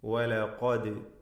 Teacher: ഈ പദത്തിലെ ദാലിൻ്റെ സുക്കൂൻ ഖൽഖല നൽകി ശബ്ദം ചലിപ്പിച്ച് വ്യക്തമാക്കി ഉച്ചരിക്കണം